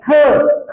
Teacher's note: या व्यंजनांचा उच्चार करताना त्याच्यामध्ये ह मिसळलेला असतो बघा रे ख चा उच्चार केला की ह चा उच्चार होतोय